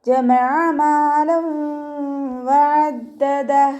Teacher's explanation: ദാലിന് ശ്രദ്ധ വന്നിട്ടുണ്ട്, അപ്പം നമ്മളവിടെ കുറച്ച് കനം കൊടുക്കുക കേട്ടോ. പിന്നെ ഇവിടെ നമ്മൾ അവസാനത്തിൽ നിർത്തുമ്പോൾ ഹാക്ക് സുക്കൂന് കൊടുത്തിട്ട് നിർത്തുക.